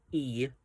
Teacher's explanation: For our vowels, we have a front closed vowel